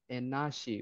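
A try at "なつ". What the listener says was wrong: Oh, actually that isn't she, that'd be t natsu. Natsu. But it's not nasi.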